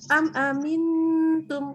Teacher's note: huruf mim kalau buru-buru malah nggak kedengaran kayak mim, lebih kedengaran kayak n jadinya. Karena bibir belum sempat ketemu, udah lepas lagi.